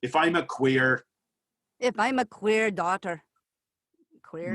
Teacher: make it a harder r give me that hard pirate r